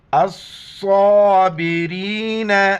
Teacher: کو دیکھ لیں۔ الصابرین، حمزہ کو صاد کے ساتھ ملائیں گے، صاد موٹے الفاظ میں سے موٹا کرنا ہے اور کڑا زبر ایک الف کی مقدار کھینچنا ہے